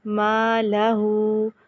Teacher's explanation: ہو پہ الٹا پیش ایک الف کے برابر لمبا کیا